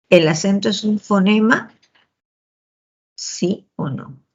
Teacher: Y si agudizamos el oído, vamos a darnos cuenta pues que ahí esa entonación termina en ascendente. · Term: entonación final ascendente